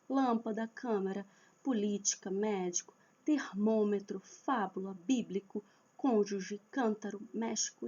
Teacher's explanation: todas que têm a antepenúltima forte, que tem a tônica na antepenúltima, ela é acentuada. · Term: proparoxítona